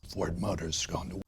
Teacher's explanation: وسوف نحتفظ فقط ب S، و S سوف تنطق على الشكل Z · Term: الاختصار